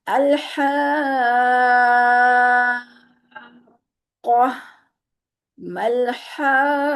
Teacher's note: الحاقہ جو ہے یہاں پر مد لازم ہو رہی ہے، اس کو 3 الف کے برابر یا 3 سے 4 الف کے برابر بھی اس کو کھینچ سکتے ہیں